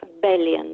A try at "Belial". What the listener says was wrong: Belial, con la L finale.